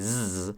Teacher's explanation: Now, if we're going to make that fricative sound on the alveolar ridge instead of the teeth, it's easy to say zzz, because that is the voiced alveolar fricative present in English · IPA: /z/